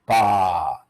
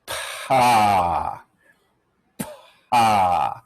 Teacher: The lips part, and then after that, the vocal cords start vibrating. In fact, you can feel a little puff of air instead of the vocal cords vibrating.